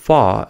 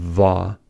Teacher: air escapes through the space between the top teeth and the lower lip